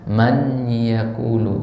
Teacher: jadi ada bunyi n sedikit tapi langsung dilebur ke huruf ya ya tapi bunyi Nun sukunnya masih ada kan ya masih ada